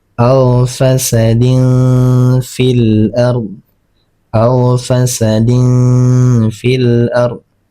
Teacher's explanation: didengungkan kemudian kita samarkan tanwinnya kemudian ditahan ee selama dua harakat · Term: ikhfa hakiki